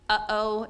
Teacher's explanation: the left is what we call a glottal stop so that's a sound that's made with the throat or the vocal cords just kind of slamming those vocal chords together so uh-oh is a glottal stop word our language English does